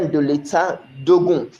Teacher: the first vowel is going to disappear for the second vowel to be left in that construction. So that DE, the E, which we call E in French, is going to be removed, and the Ogun is still going to be there just as it is in normal writing.